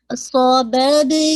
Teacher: صببنل نل not نل, ایسے نہیں. تو با پہ قلقلہ کر کے اس کو آپ نے لام کے ساتھ اس کو ہٹ کرنا ہے, لیکن اس میں جسے کہا جائے شیک ہی نہیں کرنا.